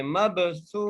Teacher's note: با پہ قلقلہ کرتے ہوئے پڑھیں